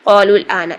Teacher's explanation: ٹھیک ہے، دو ساکن دو کلموں میں اگر جمع ہو جائیں، پہلا ساکن حرف مدہ ہو تو حرف مدہ کو گرا دے، حرف مدہ کو مت پڑھیں بلکہ اس کی پچھلی حرکت کو اگلے حرف ساکن کے ساتھ ملائیں جو دوسرا ساکن تھا. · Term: حرف مدہ ڈراپ